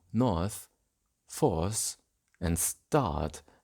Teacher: When post-vocalic R is pronounced as a schwa, it forms a centering diphthong with its preceding vowel. The onset of a diphthong is always short, so north, force, and start become north, force, and start, as in Mid-Atlantic.